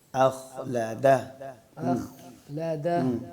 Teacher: یہاں میرا خیال ہے اخلدہ میں جو حمزہ آتی ہے وہ حمزہ باریک ہوتی ہے نا بیٹا, تو خا موٹا ہوتا ہے, تو آپ نے اس کو پہلے خا اخلدہ کوشش کریں الگ الگ کر کے پڑھیں. حمزہ کو تحقیق سے پڑھ کے پھر اس کے بعد خا کو موٹا کرنا, حمزہ کو موٹا نہیں کرنا.